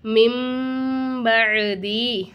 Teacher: அடுத்தா மீமுக்கு மேலே சத்து வந்த காரணத்தினால மீமை வந்து ஒரு செகண்ட் நல்லா அழுத்தி உச்சரிக்கணும்.